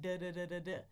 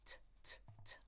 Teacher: The voicing. So if my vocal folds are vibrating, I'm going to get a D sound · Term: flap T